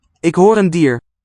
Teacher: here, at the end of the sentence, deer sounds retroflex